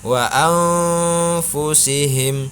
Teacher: nun mati dibaca samar karena hukum bacaannya adalah ikhfa